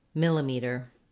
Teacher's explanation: the word millimeter has four syllables and the stress falls on the first syllable mill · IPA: /ˈmɪləmitɚ/